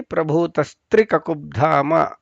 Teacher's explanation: ಮುಂದೆ ಪ್ರಭೂತಸ್ತ್ರಿ ಕಕುಬ್ಧಾಮ, ಅಲ್ಲಿ ಪ್ರಭೂತಃ ಇದ್ದಿದ್ದು ವಿಸರ್ಗ ಹೋಗಿ ತಾ ಜಾಗದಲ್ಲಿ ವಿಸರ್ಗದ ಜಾಗದಲ್ಲಿ ಸಕಾರ ಬಂದು ಕುತ್ಕೊಳ್ಳುತ್ತೆ. ಒಟ್ಟಿಗೆ ಹೇಳುವಾಗ ಅಲ್ಲಿ ಪ್ರಭೂತಸ್ತ್ರಿ ಕಕುಬ್ಧಾಮ ಅಂತ ಹೇಳಬೇಕು.